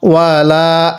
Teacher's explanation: এই লামের মধ্যে আমরা এক আলিফ টান দিব এই খাড়া জবরের কারণে